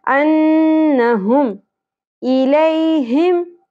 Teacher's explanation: ह अक्सा हलक से